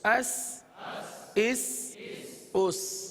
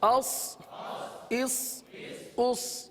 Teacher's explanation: سین کو باریک پڑھا جاتا ہے اور صاد کو پر پڑھا جاتا ہے